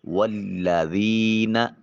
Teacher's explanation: یا ساکن ما قبل یا ذال کے نیچے زیر ہے تو نرمی سے ادا کریں گے اور اس کو ایک الف کے قائم مقام لمبا کریں گے